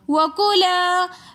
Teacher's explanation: وَكُلَا کے اندر بھی الف مدہ ہونے کی وجہ سے ہم ایک الف کی مقدار کھینچ کر پڑھیں گے